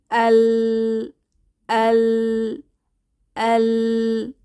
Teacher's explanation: জিহবার আগাটা সামনের উপরের দাঁতের গোড়ার সাথে গিয়ে লাগলো এবং জিহবাটা গোল হয়ে গেল এবং দুই পাশ দিয়ে আওয়াজটা ঝুঁকে বের হলো